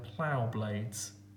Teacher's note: Plough blades is a plosive, the p and the b. These sounds almost cutting through the poem, like the plough itself is cutting through the ground.